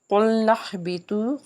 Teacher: قُلْنَا اهْبِطُوا، قاف جو ہے حرف مستعلیہ کا حرف، اس کو پر پڑھیں گے، نون کو ہا سے ملائیں گے، ہا حرف حلقی کا حرف ہے، حلق کے نچلے حصے سے ادا کریں گے۔